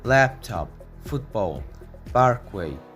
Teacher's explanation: You need to articulate vowels in the stressed syllables with extra length and a slight rise in pitch. Stress the first part of the compound nouns like laptop, football, parkway.